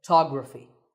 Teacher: So the first syllable becomes ph, and the stress goes to the second syllable, photography.